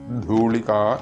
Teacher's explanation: മഹാപ്രാണനായ അക്ഷരമാണത് ധൂളിക എന്ന് നീട്ടി ജപിക്കുക